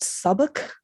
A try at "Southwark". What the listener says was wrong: Southwark. There's no B in there.